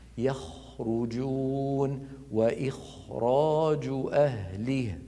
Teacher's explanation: يخرجون وإخراج أهله، فهكذا هو صوت الخاء، مستعل مفخم، خاء مهموس، رخو رخو يعني يجري معه الصوت من غير تكلف ومن غير كما ذكرت هذا الصوت المضغوط الذي يشبه صوت الشخير.